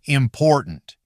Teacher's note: If you pronounce the middle T too strongly, almost like a full separate syllable, it sounds awkward. In natural English, that T often gets weaker or nearly disappears. Why? Because it sits in an unstressed position.